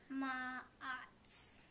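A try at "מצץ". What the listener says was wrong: Sats. So it's really easy to confuse the ayin with the tsadi.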